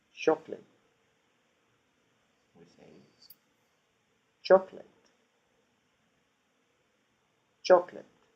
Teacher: reduced but in fact sometimes they disappear as in this case the only full vowel that is pronounced is the first one the one that has the stress · in English then final part of the word chocolate are not stressed therefore they get reduced and not only reduced but in fact sometimes they disappear as in this case the only full vowel that is pronounced · Very different from the Spanish, for example, chocolate. In English, then, final part of the word chocolate are not stressed. Therefore, they get reduced. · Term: stress time Rhythm, stress time rhythm